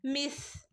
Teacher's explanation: പല്ലിന്റെയും നാവിന്റെയും ഇടയിലൂടെ പുറത്തേക്ക് കാറ്റ് പോകുന്ന രൂപത്തിൽ ആവണം ഉച്ചരിക്കേണ്ടത്